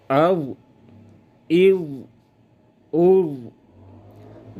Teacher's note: لمبی اور جاری رہے استطالت اور رخوت کی وجہ سے۔ اس میں استطالت ہے اور رخوت ہے۔